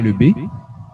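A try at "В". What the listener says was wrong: Attention, le B, regardez entre parenthèses la prononciation de cette lettre. Ça s'écrit exactement pareil, mais ça se prononce V. Donc, des faux amis, mais c'est pas grave, ça prend très très vite. On fait la différence entre la prononciation française et russe.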